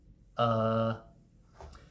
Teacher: our mouth is open a little bit our tongue is just chillin it's very lazy it's not doing anything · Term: neutral vowel